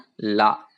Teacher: நாக்கோட நுனி வந்து மேல இருக்கிற அன்னத்தோட நுனியை வந்து டச் பண்ணும் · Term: வகர லகரம்